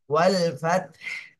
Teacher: তাহলে তার উপরেও সাকিন, হার উপরেও সাকিন দিতে হবে। ফাত, শুধু বাতাস বের হবে লাস্টে।